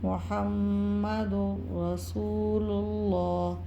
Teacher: 2 پیش کی تنوین کے بعد یرملون میں سے جو ہے را مشدد آ رہا ہے، ادغام بلا غنہ ہوگا، لام یا را مشدد میں سے کوئی بھی حرف ہوتا ہے ادغام بلا غنہ ہوتا ہے۔ · محمد رسول اللہ، واو ساکن سے پہلے پیش واو مدہ ہوگا، ایک الف کی دار تک کھینچیں گے۔ اللہ کے نام سے پہلے پیش آ رہا ہے تو اللہ کے نام کو موٹا پڑھیں گے